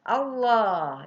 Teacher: Allah itu tebal, ya, lamnya lam jalalah sebelumnya berharkat patah maka tebal membacanya